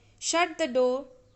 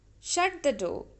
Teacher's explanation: i am saying firmly i am giving because i am giving commands but my tone is falling here my tone is not rising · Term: falling tone